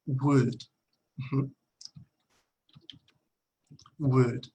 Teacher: La L no se pronuncia.